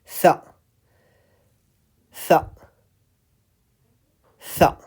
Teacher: So here is the bottom teeth and here is the top teeth. So your tip of the tongue is in between. And you say tha, tha, tha, with release of a soft burst of air as you pronounce tha.